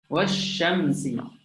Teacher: huruf lam mati bertemu dengan huruf shin. Ya. Lam tak dibaca, terus masuk ke dalam huruf shin. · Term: lam syamsiyah